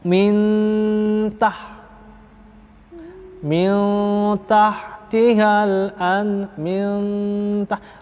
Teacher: makhrajnya langsung nempel ke huruf ta, ya. Andada, jangan angdada, tapi andada, langsung ya. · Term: ikhfa aqrab